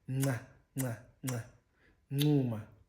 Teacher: the nasal version, nca, which is a pre-nasalized version, nca, nca, nca, ncuma, smile, ncuma, smile.